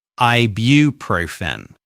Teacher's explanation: Another tricky thing about this word is the invisible y sound before the u